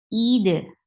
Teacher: Don't drop hamza. Don't drop kasra. The hamza should be there. It should be pronounced from your throat. Kasra should sound e.